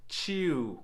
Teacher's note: when we say chew, in English, we are doing a vowel slide. We might not realize it, but we're actually going chew.